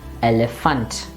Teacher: it's an international word and so the stress is towards the end